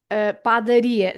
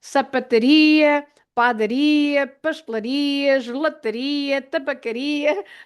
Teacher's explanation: the one before the last syllable is ri, R-I. So you stress that I